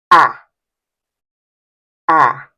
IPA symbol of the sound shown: æ